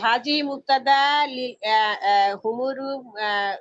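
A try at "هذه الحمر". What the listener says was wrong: মুক্তাদা, শুনেন শুনেন, হাজিহি মুক্তাদা আল হুমুরু, আপনি আল বাদ দিয়ে বলছেন আল হুমুরু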